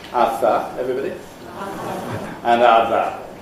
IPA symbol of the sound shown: ɑθɑ